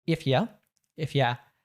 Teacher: oftentimes we natives will reduce that to ya